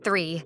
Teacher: place your tongue between your teeth lightly blow air and make sure it doesn't sound like an s or a d